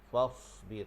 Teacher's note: Huruf sad pula kita pastikan dia berdesir.